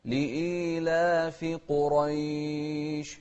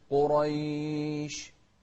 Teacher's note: والشين من أحرف التفشي، أو حرف هو حرف التفشي ومن أحرف الهمس، فحثه شخص سكت. انتبه للقاف المفخمة والراء المفخمة في كلمة قريش